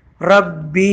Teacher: اس با کو ہم نے کھینچنا ہے دو الف کے برابر